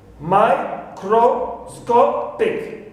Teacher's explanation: So before it, number 1, cro is not taking secondary stress, and number 2, before the stressed syllable takes the secondary stress. So me is the syllable which takes the secondary stress · So I have here microscopic. So sco is the stressed syllable. It takes primary stress. So before it, number 1, cro is not taking secondary stress, and number 2, before the stressed syllable takes the secondary stress.